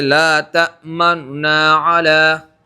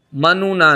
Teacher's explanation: بالکل خالص اظہار نہیں ہونا چاہیے لا تأمنونا، بلکہ نون کے اوپر، پہلا جو نون ہے اس کے اوپر جو پیش ہے، ہاں یہ والا پیش پڑھنا اس انداز میں، منونا، اس انداز میں پڑھیں گے، اور پڑھتے وقت کیا کریں گے؟ پیش کو تہائی حرکت روم کر کے ادا کریں گے